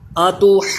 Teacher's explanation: جیم پہ تھوڑی دیر لگائیں گے، جماؤں کے ساتھ قلقلہ کریں گے، نون پہ دیر لگائیں گے، اس میں غنہ کریں گے۔ پھر پڑھیں اتحاجونی۔